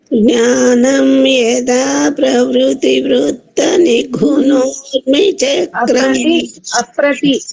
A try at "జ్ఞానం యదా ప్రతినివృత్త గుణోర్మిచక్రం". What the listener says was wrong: అప్రతి నివృత్త ప్రవృత్తి అంటున్నారు, ప్రవృత్తి కాదు. ఆ ప్రతి యదా జ్ఞానం యదా ప్రతి నివృత్త గుణోర్మి చక్రం